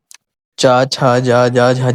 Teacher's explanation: ये सब तालु से कहां से तालु अपने मुंह का जो तालु होता है वहां से ये आवाज निकलेगी